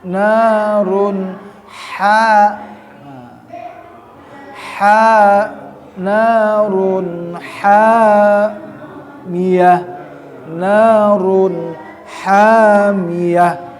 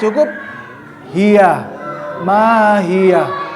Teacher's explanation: Kalau ha ya, dia ada di tengah-tengah tenggorokan sehingga agak terangkat ya.